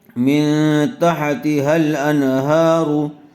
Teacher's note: نون ساکن کے بعد حروف حلقی میں سے ہا آیا ہوا ہے اس لیے بغیر غنّے کے جلد اظہار کر کے پڑھیں گے۔